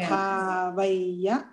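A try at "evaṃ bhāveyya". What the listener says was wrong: Dạ đúng rồi.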